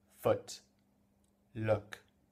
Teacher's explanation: C'est pas ou comme en français, c'est e.